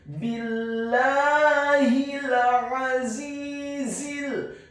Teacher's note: Huruf za-nya dibaca tafkhim tebal dengan desis yang tebal, kasrah 2 harokat karena setelahnya ada huruf ya sukun, dan huruf za yang kedua dibaca tafkhim tebal, cukup 1 harokat saja karena setelahnya langsung disambung. · Kata azizil, huruf a-nya ditekankan keluar dari tenggorokan bagian tengah, fathah 1 harokat.